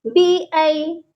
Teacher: یہاں پر جو یا ہے یہ یا لین ہے، اس کو ہم نے کھینچے بغیر پڑھنا ہے